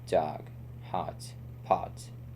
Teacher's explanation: O, hot, pot, and dog are pronounced with a short rounded O, similar to the American O.